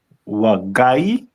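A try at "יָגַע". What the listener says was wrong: First letter is gonna be, it's not wa.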